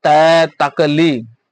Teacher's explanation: दंत्य ध्वनि, दांत और जीभ के स्पर्श से बोले जाने वाले